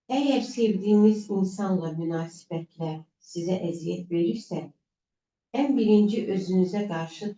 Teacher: Burda gördüyünüz kimi monoton oxunuş tərzi oldu da.